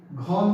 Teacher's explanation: ख देखिए इसमें हकार जैसी ध्वनि होगी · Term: महाप्राण व्यंजन